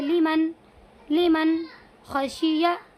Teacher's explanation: इस नून साकिन के बाद हरूफ हल्की के 6 हरफों में से खा आया हुआ है, इसीलिए क्या होगा? इस नून की आवाज़ को भी ज़ाहिर करके पढ़ेंगे